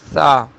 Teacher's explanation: آپ کی زبان جب اوپر والے دانتوں سے ثنائے علیہ سے کنارے سے لگتی ہے تو سا ادا ہوتا ہے